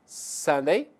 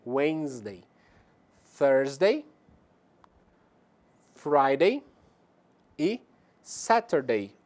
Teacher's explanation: a sílaba tônica é na verdade a primeira da palavra